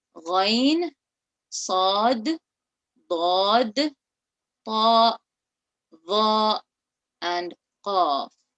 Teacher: The 7 heavy letters are the letter kha, and you notice that I kind of have a rounder mouth, and I am reading them with a raised tongue